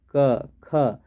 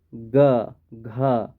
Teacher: क ख इकर में तो कोनो कंपन नहीं बुझाते, मुदा ग घ जखन इकर उच्चारण करब तो तनिकुन कंपन बुझाएला